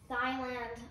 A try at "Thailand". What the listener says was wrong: Thailand? She said Thailand. No, it's pronounced Thailand. but Thailand, you know, it's like where thighs are from. There is an H in it. The H is silent. Not like your thighs.